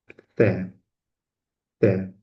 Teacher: Bu tovush talaffuz qilinganda tilning uchi tepa va pastki tishlar orasida bo'ladi.